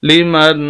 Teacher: نون ساکن پر تقریباً غنہ ہوتا ہے لیکن یہاں پر غنہ نہیں ہوگا. وجہ یہ ہے کہ اس کے آگے نون ساکن کے آگے حروف حلقی میں سے خا آ چکی ہے، اور یہی اصول ہے کہ جب حروف حلقی میں سے کوئی لفظ آ جائے جہاں پر غنہ اور اس کے اگلے لفظ پر تو پھر غنہ نہیں ہوتا، اس وجہ سے یہاں پر غنہ نہیں کریں گے.